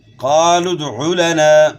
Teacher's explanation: قاف کو موٹا پڑھنا ہے. دال میں قلقلہ ہوگا. عین کے بعد گلے کے درمیان سے ہوگی اور اس کے بعد پھر الف مدہ ہے.